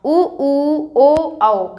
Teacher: उ उ और उ ओ और औ ओ और औ को बोलने से मुख आपका कैसा हो जाएगा तो गोल होगा उ उ ओ औ कैसा हो रहा है मुख गोल हो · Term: वृत्ता मुखी